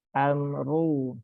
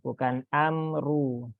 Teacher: ru-nya dibaca tebal ya, karena dia berharokat dhammah